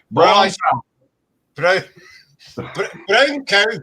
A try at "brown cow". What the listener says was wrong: It sounded like you said burnt cow. Brown.